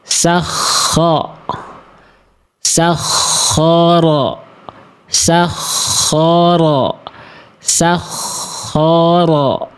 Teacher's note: Di sini ada kho dan ro yang sama-sama tebal dan sama-sama fathah, maka angkat pangkal lidahnya. Ya, angkat pangkal lidah, buka mulutnya, sehingga bunyinya seperti ini.